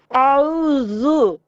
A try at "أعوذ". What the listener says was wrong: A'udhu, dhu, dhal, a'udhu. ayn is a problem as well. A, عين middle throat. أعوذ بالله من الشيطان الرجيم. أعوذ ذال.